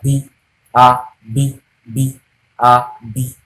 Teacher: B is produced with a plosive sound. That is, it comes out by force